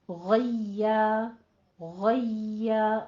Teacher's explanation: ٹھیک ہے. غیا غیا غین کی آواز پر رہے گی، آگے یا باریک ہو جائے گا